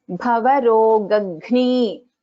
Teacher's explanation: So first ga is an Alpa Prana, second gha is Mahaprana.